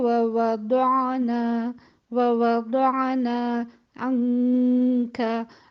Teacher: عین جو ہے وہ توسط کی صفت رکھتا ہے، اور اس میں آواز تھوڑی سی چلتی ہے، بہت زیادہ نہیں چلتی اور بالکل کٹتی بھی نہیں ہے